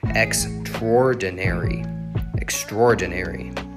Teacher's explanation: This is interesting because technically you pronounce it extraordinary, extraordinary, but sometimes I say it with the second and third syllable combined.